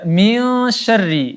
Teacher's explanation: nun sukun bertemu dengan huruf shin, maka hukumnya ikhfa hakiki. Kita dengungkan 3 harakat.